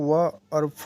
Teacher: व और फ जो है दंतोष्ठ वर्ण है।